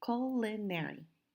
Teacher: If we look at the word culinary, you will see that I have marked in bold the first syllable. Now the word culinary has 3 syllables, culinary. And the stress is on the first syllable. So that's the syllable that we say a little bit longer and a little bit louder, culinary.